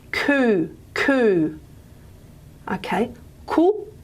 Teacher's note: so we call this a high central rounded vowel